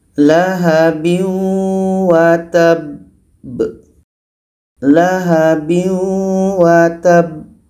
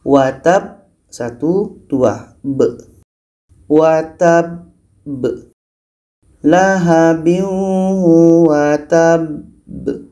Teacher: Maka cara berhenti pada huruf qalqalah yang ada tasdid ini, kita berhenti 2 detik, setelah itu pantulkan.